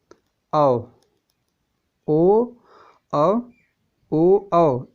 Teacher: कंठ और ओष्ठ दोनों से बोले जाएंगे। अगर कोई पूछ रहा है कि ओ और औ किससे बोला जाता है, तो आप बताएंगे कंठ और प्लस ओष्ठ दोनों से बोला जाएगा। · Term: कंठोष्टम